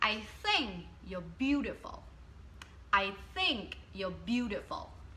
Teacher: một từ nhấn một từ không nhấn một từ nhấn một từ không nhấn